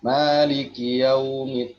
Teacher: yaunya dilembutkan saja Ustazah karena madlin ya